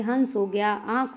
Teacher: इनका उच्चारण अनुस्वार की अपेक्षा हल्का होता है हवा नाक और मुंह दोनों से निकलते है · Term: अनुनासिक